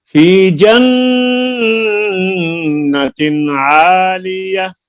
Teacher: ये नून को लंबा करना है आपने, जन्नत की